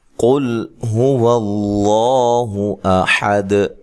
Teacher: یہاں قاف کو خوب موٹا کرنا ہے، قاف موٹے حروف میں سے ہے، جو کہ 7 حروف موٹے ہیں، ان میں سے قاف ایک حرف ہے، اور یہاں لام کو ہلانا نہیں ہے اور موٹا بھی نہیں کرنا، ٹھیک ہے۔